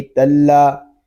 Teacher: تا کو ہم لام کے ساتھ ملا کر پڑھیں گے کیونکہ لام مشدد ہے، اور مشدد حرف اپنے سے پہلے والے متحرک حرف سے مل کر پڑھا جاتا ہے۔